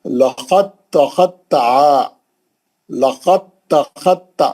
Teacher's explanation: دال تا کے اندر چلے گئی اور تا مشدد بن گئی متحرک سے، اور آپ تا سے ہی پڑھیں گے، دال نکل، دال ادغام کر گئی، دال غائب ہو گئی، لقد تخطع۔